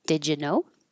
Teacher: Did you changes to did ya?